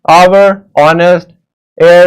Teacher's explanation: begin with a vowel sound as the initial consonant h is not pronounced